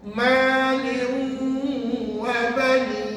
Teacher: Tanwin tu nak baca ke tidak? Tak payah baca sebab tanwin tu dah masuk dalam waw. Jadi nak sebut waw, bibir ni kena muncul.